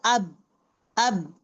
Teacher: upper lip touching the lower lip produces the sound बा